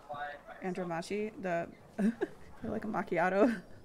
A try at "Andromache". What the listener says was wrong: No, Andromache. No, Andromache. Not she, chi. Like center yo chi.